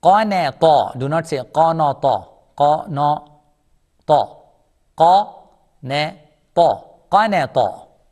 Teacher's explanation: Ta is heavy. No smile.